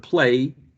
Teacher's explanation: play ends in diphthong which is a voiced sound